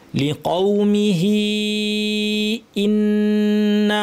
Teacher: হামজাকে শক্ত করতে হবে এবং হামজার পর সরাসরি নুনকে ধরবো